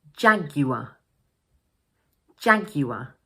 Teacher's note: the final r is pronounced as a Schwa